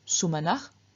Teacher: In the vocative, we find just the stem, no ending, and again, through external sandhi, the final s changes into a visarga, so we get sumanach.